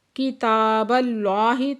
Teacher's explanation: کتاب اللہ، تا پہ کھڑا زبر ہے، دو حرکت کھینچ کے پڑھیں گے۔ اس میں جلالہ کو پورا آواز سے پڑھیں گے کیونکہ اس سے پہلے زبر ہے۔ · اوتل کتاب، تا کے اوپر کھڑا زبر ہے، دو حرکت کھینچ کے پڑھیں گے۔ کتاب اللہ، تا پہ کھڑا زبر ہے، دو حرکت کھینچ کے پڑھیں گے۔